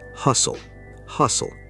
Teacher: The T is almost silent, not hostile.